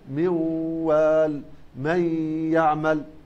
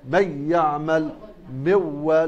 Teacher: في الواو والياء الإمام خلف لا يضغم بغنة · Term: بدون غنة